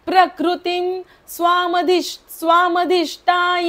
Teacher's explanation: ईश्वरोपी वेगळं वेगळं करून लिहिलंय पुढचं चरण पण वाचून दाखवते प्रकृती प्रकृतीचा विसर्ग जो आहे तो म बोलायचा आहे